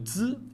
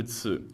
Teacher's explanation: le zi n'est pas aspiré. Il contient moins de friction et est plus court. Le ci est aspiré, contient davantage de friction et est plus long.